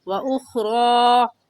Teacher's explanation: کھڑی زبر کو ایک الف کی مقدار کھینچ کر پڑھتے ہیں، اور دوسری بات کہ غا کے اوپر زبر آ جائے یا کھڑی زبر آ جائے تو اس غا کو پر کر کے پڑھیں گے، اور پر کرنے کا طریقہ ہے کہ آپ کے دونوں ہونٹ گول ہو جائے